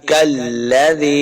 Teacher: یا مدہ ہے، دو حرکات لمع کریں گے